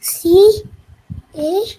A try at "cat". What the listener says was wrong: No, not C-A-T. You should read it as go at cat. At words.